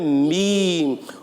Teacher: जब होठों का खुश हिस्सा मिलता है आपस में तो अदा होता है मीम